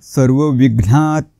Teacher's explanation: त हलंत आहे त्याचा उच्चार अर्धा करायचा आहे